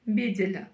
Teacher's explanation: Буква Л в данном случае читается мягко, потому что перед ней стоит буква Е.